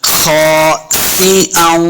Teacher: सिन के नीचे जेर है, इसको सिन को पढ़ते हुए सीटी की आवाज आएगी।